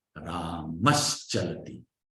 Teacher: Ramaha Chalati will become Ramash Chalati. See? Now the S there is a sibilant. And it is a palatal sibilant.